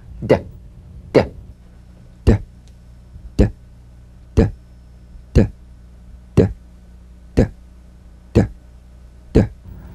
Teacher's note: Voiced tongue front palatal stop consonant. Play this D drum beat on the springing away of the tongue from the upper gum ridge. Feel a pulsation in the tongue. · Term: drum beat D